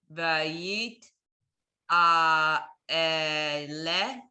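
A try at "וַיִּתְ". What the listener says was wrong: Again, I'm hearing too many syllables in there. Try again. Look at the syllable.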